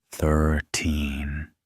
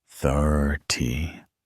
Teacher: In 13, the stress is on the second syllable.